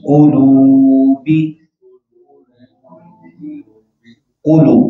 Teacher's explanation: قاف کی پیش کو اور گول کریں گے